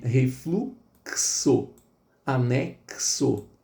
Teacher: É o caso da letra X, soando como KS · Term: dífono